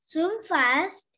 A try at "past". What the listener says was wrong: Not fast. What's the word letter over there? P-A-S-T. What's it? What's the sound of P? Past.